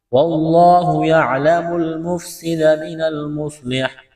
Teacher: وقف کریں گے تو حا کو ساکن کریں گے